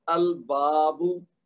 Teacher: تو اب با کے بعد الف مد ہے 2 حرکت